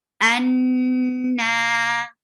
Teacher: you will give a longer time of gunna. And gunna is to keep your sound in your nose. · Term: akmal gunna